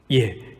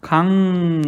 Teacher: 1단계에서 단계별로 얘기한다면은 각론으로 바뀌고 2단계에서 강론으로 바뀌었습니다. 자, 리을에 해당하는 소리가 니은으로 바뀌고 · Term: 비음화